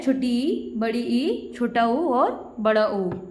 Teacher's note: जिभ्या और मुख विवर के जो ऊपरी भाग के बीच कम से कम दूरी रहने पर जो ध्वनि का उच्चारण हो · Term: समृद्ध स्वर